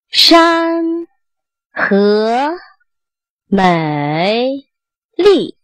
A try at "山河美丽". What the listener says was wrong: 你 看 你 这 个 最 后 这 个 地 方 ， 山 山 山 ， 你 就 有 一 点 往 下 降 了 ， 山 山 就 不 对 了 ， 山 ， 然 后 河 也 是 一 样 ， 河 美 丽 ， 就 一 定 是 在 它 结 尾 的 时 候 也 要 认 真 发 完 ， 不 要 我 音 还 没 发 完 ， 我 嘴 或 者